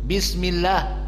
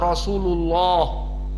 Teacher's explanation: Maka dari segi tajwidnya di sini adalah lafdul jalalah Allah, maka di sini muraqqaqah lam li'anna qablahu kasrah bismillah, walakin idza kana qablahu dhammah rasulullah mufakhamah